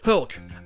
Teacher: comme c'est prononcé en anglais, Hulk, avec le H aspiré